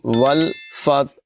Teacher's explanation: واو کو لام سے ملائیں گے اور فا تا سے ملے گی